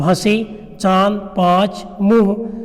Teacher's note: जो ध्वनि होती है हमारे नाक को भी स्पर्श करते हुए बाहर निकलती है, तो ये ध्वनि अनुनासिक होती हैं।